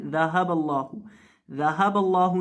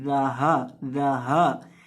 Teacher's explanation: ذهب اللہ، اکثر لوگ اسے پڑھ دیتے ہیں ذهب اللہ، ذهب اللہ نہیں، ذہا، ذہا، یہ جو ہا ہے اسے حلق کے آخری حصے سے ادا کرتے ہیں جو سینے کے ساتھ متصل ہے، اس کے بعد آتی ہے ذہب اللہ، اور لفظ اللہ کے لام کو موٹا کریں گے اور لمبا کریں گے۔